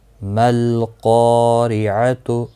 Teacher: دیکھو لام ال کے بعد حروف قمری کا قاف ہے تو ال کا لام پڑھا گیا، یعنی پچھلے حرف کے ساتھ ملا کر پڑھا گیا کیونکہ ساکن ہے۔